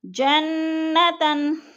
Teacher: جنہ پہ نون مشدد ہے، غنہ کریں گے۔ تاؤں پہ ادغام ہو رہا ہے۔